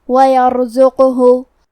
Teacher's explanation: ہم قاف کو جزم سے پڑھیں گے اور اسے قلقلہ سے بھی پڑھیں گے، مطلب ہم یہ حرف کو ہلاتے ہوئے یہ کلمہ کو پڑھیں گے